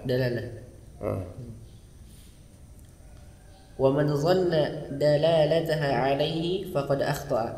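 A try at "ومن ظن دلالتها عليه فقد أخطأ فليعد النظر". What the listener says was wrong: Enggak, waqafnya jangan kayak gitu. Wa man dhanna dalalataha alaihi faqad akhta' falyu'id an-nazara marratan ba'da ukhra.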